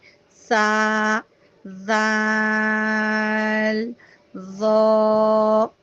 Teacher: اب رہی سا دال زو، تو اس کو آپ نے اس طرح کرنا ہے کہ پہلے آپ نے یاد کرنا ہے کہ زبان کی نوک دانتوں کے باہر نکالنی ہے اور پھر پڑھنا اسٹارٹ کر دیں.